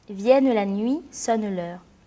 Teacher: Vienne la nuit, sonne l'heure. Les 2 voyelles IE du mot vienne se prononcent ensemble et sont rattachées à la même syllabe. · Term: synérèse